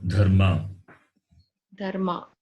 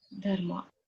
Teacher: The consonant is Mahaprana and the vowel is short vowel.